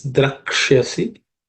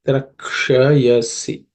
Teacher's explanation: The Uksha is cerebral sh, so the tip of the tongue should point up.